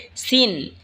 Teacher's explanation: সিন জিহ্বার আগা সামনের নিচের দুই দাঁতের আগার দিকে লাগা উচ্চারণ হবে সিন। এই ঝা যেখান থেকে উচ্চারণ হয়েছে সেখান থেকেই সিন উচ্চারণ হবে।